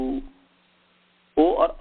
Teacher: ओ औ का जो है कंठ और ओष्ठ स्थान है